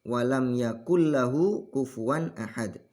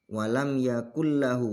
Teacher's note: Yakullahu di sini ada hukum yang namanya idgham bila guna. Nun sukun ketemu lam. Ya. Ada nun sukun ketemu lam.